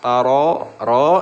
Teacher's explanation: ro yang berharokat fathah itu dibaca tafhim ya, tebal